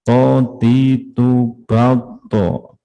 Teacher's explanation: Punggung ujung lidah mengenai pangkal gigi depan atas. To itu temannya dal sama ta, itu satu tempat ya.